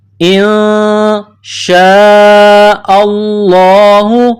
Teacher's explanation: نون ساکن کے بعد شین ہے، حروف اخفا ہے تو غنہ کیا جائے گا، آواز ناک میں چھپائی جائے گی. انشاء اللہ، شین الف مد زبر شاء، یہ لمبی مد ہے، 4 الف کی لمٹ میں کھینچنا ہے.